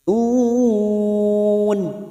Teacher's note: ya yang bertasdid hanya masuk tanpa ditahan lama-lama